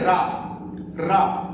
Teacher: इस वर्ण को बोलने में हमारी जीभ कांपती है या पीछे की ओर लौटती है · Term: लुंडित वर्ण